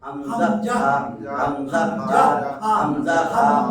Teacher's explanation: এই হা আর হামজা এক জায়গা থেকে উচ্চারিত হয় হলক মানে গলা